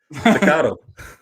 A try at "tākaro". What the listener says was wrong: So it's the first A has like a double A, like Ta Karo.